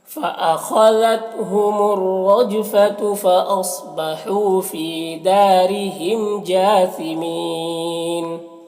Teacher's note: فاصبحوا صاد حروف مستعلیہ میں سے، ہو میں واو مدہ ہے، فی میں یا مدہ ہے، اور دال میں یہاں پر الف سے پہلے دال میں زبر ہے تو الف مدہ ہے، را کے نیچے زیر ہے، را کو باریک پڑھیں گے، میم میں اظہار شفوی ہو رہا، جیم میں کھڑا زبر ہے، اور یہاں پر وقف کی صورت میں مد عارض وقفی ہوگا تو اس طرح سے پڑھیں گے۔